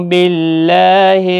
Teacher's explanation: ساکن کو جھٹکے کے ساتھ ادا کریں، نو واو مدہ ہے، اللہ کا لام زیر کی وجہ سے باریک ہوگا